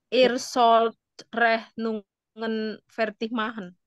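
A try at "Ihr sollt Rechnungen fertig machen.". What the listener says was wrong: Iya.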